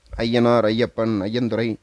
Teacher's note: ஐயனார் ஐயப்பன் அப்படின்னு வார்த்தையோடு சேர்ந்து ஒளிக்கும் பொழுது தன்னுடைய முதல் வார்த்தையில இருந்து அரை மாத்திரை குறைந்து ஒன்றரை மாத்திரையாக ஒளிக்கும்